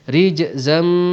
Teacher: Rijzam, ada tanwin, ada tanwin berjumpa dengan mim, hukum idgham ma'al gunnah, kita dengungkan dengan dengung 2 harakat.